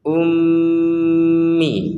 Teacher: Um dulu dengung di rongga hidung baru Mi